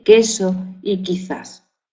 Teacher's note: representa el fonema oclusivo velar sordo de queso y quizás